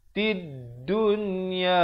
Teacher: Jadi yang mana ada tanda mati kena jelaskan bunyi lam. Yang mana tak ada tanda mati, lamnya disamarkan, tidak dibunyikan, terus masuk ke dalam dal yang bertanda sabdu. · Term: alif lam syamsiah